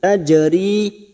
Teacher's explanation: jim sukun kol-kola sugro karena mati asli di tengah kalimat jangan lupa dipantulkan. Tajari kasrah bertemu ya sukun 2 harokat mad tabi'i.